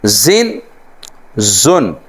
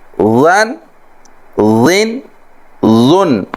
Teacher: زن سیٹی کے ساتھ، زن زن، اور اس کے بعد ون ون لن بغیر سیٹی کے اور باریک